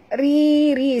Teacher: Baris bawah ra itu tipis ya, dan dua harakat mak tabi'i ya. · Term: ra tarkik